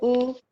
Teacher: You have a bhu, which is a dhirgam, that is the 2.5 matras one. So the visarga that follows also has to follow the 2.5 matras long.